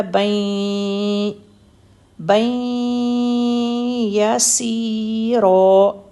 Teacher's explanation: بن کے بعد آگے یا ہے اس پر تشدید ہے، تو بن کی ساؤنڈ کو ہم نے یا کے اندر مکس کرنا ہے، تو بن سے بن جائے گا بین، بین یسیرا، سین کے ساتھ یا بھی ہے نا، اس لیے سیرا، حسابا یسیرا، فسوف یحاسب حسابا یسیرا۔